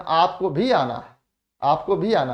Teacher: अब हालांकि मैंने भी पर यहाँ ज्यादा जोर दे दिया क्योंकि मैं बता रहा हूँ आपको, लेकिन सामान्यतः भी हम भी पर ज्यादा जोर देते हैं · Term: बलाघात